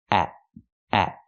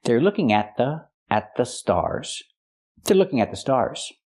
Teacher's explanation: Here the T is before a consonant, so we make a stop T. At. Put the tongue up and stop the air.